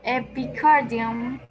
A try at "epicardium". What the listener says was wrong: Sí, perfecto.